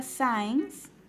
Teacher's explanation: se silabea en 2 sílabas y la mayor fuerza de voz está en la penúltima sílaba